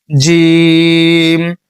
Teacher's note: এখানে জি এটা উচ্চারণ করবেন হচ্ছে জিবা যে মধ্যখান রয়েছে এটা তার বরাবর উপরে তালুর সঙ্গে লাগাইয়া যেমন আমরা বর্গীয় জ উচ্চারণ করি না বর্গীয় জ সেখান থেকে জিম।